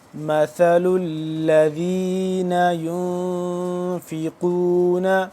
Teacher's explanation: ثا کو نرمی سے پڑھیں گے، لام کے ساتھ مل رہا ہے